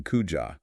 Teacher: Pushing them together into kuja relaxes the mouth and allows the phrase to roll out smoothly. It reduces the physical friction of speaking.